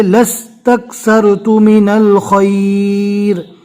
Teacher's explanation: لام کو سین سے ملانا ہے، لا نہیں پڑھنا، الف نہیں پڑھا جائے گا